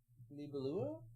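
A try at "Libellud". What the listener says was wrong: It's a D on the one. Libelude.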